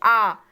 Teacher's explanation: ना तो जीभ ऊपर जा रही है न पीछे आ रही है, लेकिन जो बीच का, जहाँ पे हमारी जीभ का हिस्सा कैसा होता है, मोटा, उसे देखिए बोल के आ। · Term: मध्य स्वर